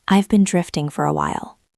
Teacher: It usually goes down at the end because it is a sad realization. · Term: intonation